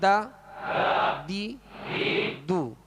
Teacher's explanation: زبان کی نوک اور اوپر کے سامنے والے 2 دانتوں کی جڑ، یہ اس کا مخرج ہے دال کا. اگر ضاد کو باریک پڑھ دیا تو دال محسوس ہوتی ہے، اگر دال کو پر کر دیا تو یہ ضاد محسوس ہوگا، ورنہ اس کا مخرج بھی الگ ہے اور ان کی خوبیاں بھی الگ الگ ہیں. · इसमें दाल को बारीक पढ़ेंगे और इसका मखर भी अलग है दाल का मखर भी अलग है यानी जबान की नोक और ऊपर के सामने वाले दो दांतों की जड़ यह इसका मखर है